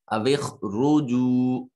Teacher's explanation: را کو مفخم یعنی موٹا اور پر کر کے پڑھا جاتا ہے جب را کے اوپر زبر یا پیش ہو، یا خود ساکن ہو کر ان سے پہلے والے حرف کے اوپر زبر یا پیش ہو۔